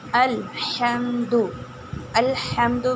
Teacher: الحمد میں حمزہ کو واضح کر کے پڑھنا ہے اور ح کا مخرج نکالنا ہے اور میم کے آواز کو ناک میں نہیں لے کے جانی